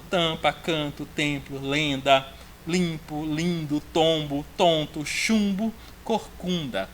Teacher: Todos esses casos aí, a vogal está nasalizada. Então, a letra M ou a letra N, elas não podem ser contadas como fonemas, porque só está servindo para dizer que a vogal anterior deve ser nasalizada, ok?